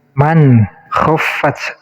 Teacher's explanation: Di sini nun sukun bertemu kho namanya izhar, jadi harus terbaca jelas nun sukunnya, jangan samar.